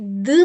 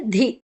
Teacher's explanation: ದ್ ಮೊದಲಿನದು ಅಲ್ಪ ಪ್ರಾಣ, ಧಿ ಅಡಿವತ್ತು ಮಹಾಪ್ರಾಣ